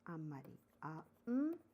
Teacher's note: Though N is written, but M is pronounced.